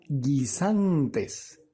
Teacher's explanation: la sílaba tónica está en el medio verdad es la penúltima